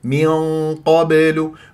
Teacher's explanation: تجيب لي غنه مفخمه من قابل وتجيب القاف مفخمه وهذا غلط لابد ان تكون الغنه مفخمه بحسب مرتبه القاف